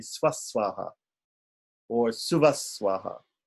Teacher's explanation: Visarga, could also be changed to an S